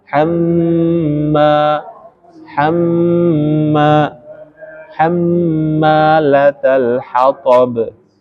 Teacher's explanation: Hamma ini gunnah. Kita tahan, kita dengungkan. Dua ketukan.